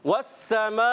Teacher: سین سیٹی والے حروف میں سے باریک پڑھیں گے اور سیٹی کے ساتھ ادا کریں گے